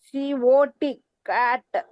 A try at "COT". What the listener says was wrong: ఏందో కట్ అంటావు, క్యాట్ అంటావు.